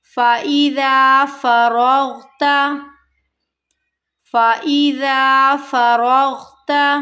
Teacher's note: اِنَّ مَعَ الْعُسْرِ يُسْرًا فَإِذَا فَرَغْتَ، فا کو نہیں کھینچنا، حمزہ کو نہیں کھینچنا، زال کو ہمیں نرمی کے ساتھ ادا کرنا ہے، دونوں دانتوں کے درمیان زبان کی نوک کو رکھتے ہوئے